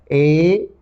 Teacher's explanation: लेकिन ये ऐसे वर्ण है ए और ऐ दोनों कंठ तालु, ए ऐ कंठ और तालु, ये दोनों का सहारे से इन वर्णों का उच्चारण होता है। ए कंठ और तालु दोनों जगह इसका थोड़ा सा दबाव आता है, हवा का दबाव आता है, इसीलिए इन वर्णों को कंठ तालु उत्पत्ति स्थान होने के कारण कंठ तालव्य कहा गया।